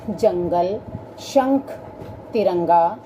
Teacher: अनुस्वार। इसका उच्चारण नाक से होता है